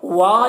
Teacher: الف مدہ ہے، اسے ایک الف کے برابر کھینچ کر پڑھیں گے.